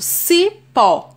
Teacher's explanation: sílaba for a mais forte eu tenho esse exemplo cipó a sílaba tônica é pó é a última sílaba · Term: oxítona